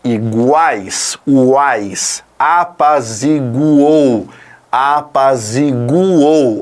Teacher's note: você tem semivogal vogal e semivogal então são três e você não separa isso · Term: tritongo oral